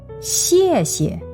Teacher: Here is the fourth tone. It goes all the way down.